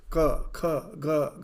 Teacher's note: When you are saying ka, kha, ga, gha, you will find for all this ka varga, the middle of your tongue is touching the palate.